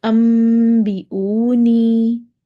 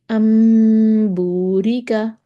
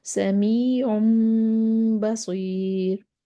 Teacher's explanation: جو ہے وہ میم سے بدل دیں گے، ٹھیک ہے، اور نون ساکن اور نون تنوین کو میم سے بدل کر غنہ اور اخفا کے ساتھ ادا کر دیں گے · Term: اقلاب